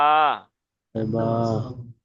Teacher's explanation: বা দু ঠোঁটের 16 নাম্বার মাখরাজ, দু ঠোঁটের ভিজে অংশ হতে উচ্চারিত হয় বা